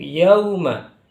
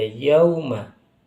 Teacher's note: ketika ada wawu sukun bacanya seperti huruf O, jangan. Tapi huruf U, mirip dengan huruf U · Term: lin